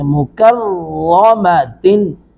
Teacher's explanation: کاف کو باریک پڑھیں گے، را کو پر کر کے پڑھیں گے